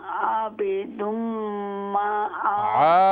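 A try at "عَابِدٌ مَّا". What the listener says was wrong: आबिदुम आइन को लंबा आबिदुम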